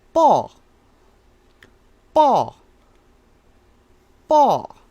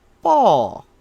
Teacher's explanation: It is a high falling. So listen to my tone at the end, how it's a high falling pronunciation